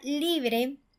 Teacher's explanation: la palabra libre recae la fuerza en la sílaba li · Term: sílaba tónica